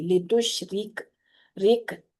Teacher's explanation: جو را ساکن ہے نا اس میں تھوڑی سی آپ کو غور کرنے کی ضرورت ہے۔ اچھا، تو یہ را بذات خود زیر والی را ہے، اس لیے یہ باریک پڑی جائے گی · لتشرک، رک، اب را باریک جو ہے نا اس کو پڑھتے ہوئے آپ ہونٹوں کو چیریں گے، جیسے ہم با کو ادا کرتے ہوئے ہونٹوں کو اسمائل والے سٹائل میں لے کے جاتے ہیں، اسی طریقے سے را کو بھی پڑھتے ہوئے یہ باریک را کو پڑھتے ہوئے ہونٹوں کو چیریں گے، ورنہ پر ہو جاتی ہے را